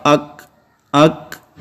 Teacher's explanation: جب ایئر فلو جاری ہوگی تو اس میں آواز یوں ظاہر ہوگی، حمزہ زبر کاف اک اک، آخر میں کھے کھے کی آواز جو ہے وہ تھوڑی سی نکلے گی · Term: صفت ہمس